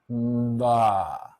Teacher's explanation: You can feel your vibrations before, very, very shortly before your lips release.